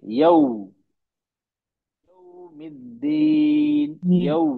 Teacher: क्यों, हम होठों को गोल नहीं करते हैं पूरी तरह से, तो हमारी आवाज निकलती है यो, ओ की आवाज निकल रही है। हम होठों को गोल करेंगे, तो आवाज सही निकलेगी, ऊ की निकलेगी। हमें आवाज ओ की नहीं चाहिए, ऊ की चाहिए। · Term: ऊ की आवाज